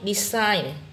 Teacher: Nhấn vào âm 2 khác với các từ còn lại âm đầu